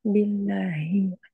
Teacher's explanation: Hi di pangkal tenggorokan ya